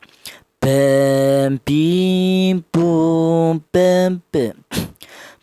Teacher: Huruf ba ini berasal dari kedua bibir yang rapat.